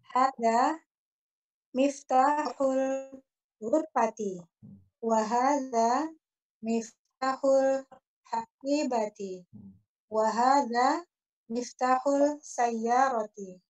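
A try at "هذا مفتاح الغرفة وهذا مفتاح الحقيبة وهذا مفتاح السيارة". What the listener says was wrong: Jamil.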